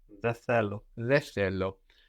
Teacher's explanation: especially with common expressions like δεν θέλω, δεν θυμάμαι, you're really likely to notice that N missing, which can remind you that you can let these N's go before TH.